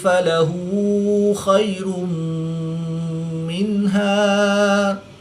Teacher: را کے اوپر دو پیش ہے تو را کو پر پڑھیں گے۔ دو پیش کی تنوین کے بعد میم حروف یلمالون میں سے ہے تو یہاں پر ادغام مع غنہ ہوگا، یعنی غنہ کر کے پڑھیں گے۔ نون ساکن کے بعد ہا حروف حلقی میں سے ہے تو یہاں پر اظہار ہوگا، یہاں پر غنہ نہیں کریں گے۔